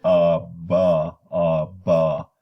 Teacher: there's no noise because B is voice then you switch directly into another vowel